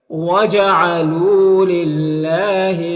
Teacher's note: یہاں پر اللہ کے لام سے پہلے لام کے نیچے زیر ہے تو اللہ کے لام کو باریک پڑھیں گے